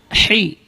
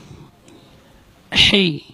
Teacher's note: Ha keluar dari tengah-tengah tenggorokan.